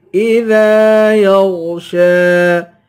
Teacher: اذا ذال کو ایک الف کی مقدار کھینچ کے پڑھیں گے الف حروف مدہ ہے